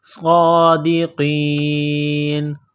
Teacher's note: کے لمٹ میں کھینچنا ہے، صادقین، قاف کو موٹا کرنا ہے، جب وقف کریں گے تو نون کو سائلنٹ کریں گے